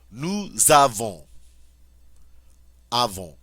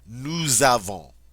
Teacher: Normally I don't get to, but when the form starts with a vowel, I get to make that liaison. So I get to say nous avons, and this S takes on a Z sound.